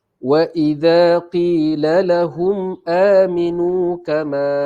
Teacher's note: ma nampak panjang 4 ataupun 5 harakat di sini ialah mad jaiz munfasil